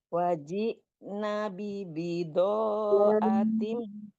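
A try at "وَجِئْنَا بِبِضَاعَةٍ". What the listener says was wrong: Na-nya panjang.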